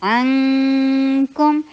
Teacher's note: عین کو حلق سے ادا کیجیے اور کاف والا غنہ کیجیے